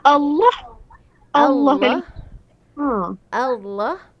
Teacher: Allah tu sebab dia ada bunyi lam tu tebal. Yang tu khas untuk lafaz jalallah kan.